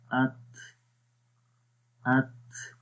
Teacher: کمزوری آ رہی ہے آواز کے اندر اور سانس بھی جاری ہو رہا ہے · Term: ہمز کی کوالٹی